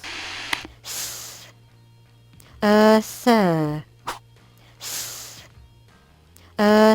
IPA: θ